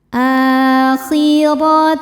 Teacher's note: Ro dibaca secara tafkhim karena berharokat di atas yaitu harokat fathah. Cara bacanya ditebalkan.